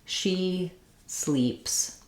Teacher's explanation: the E vowel in sleep is the high tense front vowel